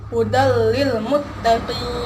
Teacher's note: langsung dimasukkan tidak didengungkan kebanyakan orang bacanya biasa disini didengungkan padahal tidak boleh didengungkan jadi harus langsung dimasukkan menjadi hudallilmuttaqin ingin sampai sini Apakah sudah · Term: idgham bilagunnah